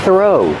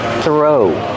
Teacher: The th makes a voiceless sound. Just air. Throw. Link the sound to the R.